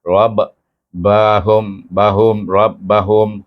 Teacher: bunyi suku kata ro itu mesti digabung dengan ba RAB bahum bahum RAB bahum Hum dibaca dengan Iz Syafawi mim